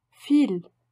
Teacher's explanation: V allemand ne correspond presque jamais au V français, mais au F de famille